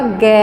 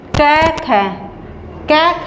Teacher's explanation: ग में स्वरयंत्र में ध्वनि का कंपन उत्पन्न हुआ थोड़ा सा अधिक, कै और ख की अपेक्षा। कंपन तो कै और ख में भी हुआ, लेकिन कै और ख के अपेक्षा अधिक हुआ ग, घ, य। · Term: सघोष